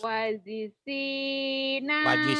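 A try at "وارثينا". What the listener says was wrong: Wajisi itu mah huruf apa? Wah sama apa itu? Bukan ji. Tapi ro kan gak ada titiknya ya. Yuk warisina. Warisina.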